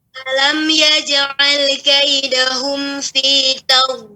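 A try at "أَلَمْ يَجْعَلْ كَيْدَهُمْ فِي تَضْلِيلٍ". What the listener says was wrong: Nah, sudah kena tapi jangan dijeda dengan lam tadi. Bukan tadlil. Ah, terjeda tadi. Tapi langsung.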